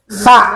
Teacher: Tsa ujung lidah dengan ujung gigi yang atas.